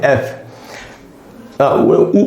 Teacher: हिंदी में वाला जो फ होता है उसमें दोनों होठ आपस में मिलते हैं। इंग्लिश वाला जो एफ होगा उसमें होठ नहीं मिलेंगे आपस में।